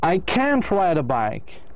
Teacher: you need to put a stress to emphasize can't and the words that follow it